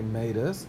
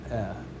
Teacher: the us changes to a short e, and we pronounce that eh